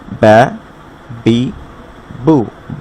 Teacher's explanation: বায়ের উচ্চারণ হয় দুই ঠোঁট থেকে।